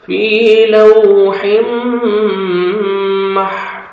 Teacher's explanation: فا کو 1 سیکنڈ کھینچنا ہے، واو مد ہے ، اور ضا کو جب سٹاپ کریں گے ضا ساکن ہو